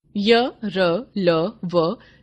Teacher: इनका उच्चारण स्वरों और व्यंजनों के बीच की स्थिति में होता है। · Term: अंतस्थ व्यंजन